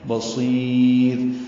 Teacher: سی یائے مدہ ہے اور اس کے بعد را آئی ہے، وقفاً یہ را باریک ہے